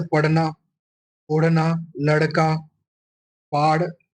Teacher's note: और जो द्विगुण है, जीभ का अगला भाग उलटकर मूर्धा में स्पर्श कराने से ड़ और ड़। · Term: उत्क्षिप्त व्यंजन